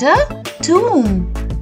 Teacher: But in this word, the O will be pronounced as a oo.